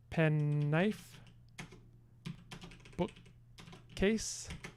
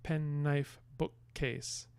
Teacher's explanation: case there are two n's they're two k's the sounds anyway two um alveolar nasals and two velar stops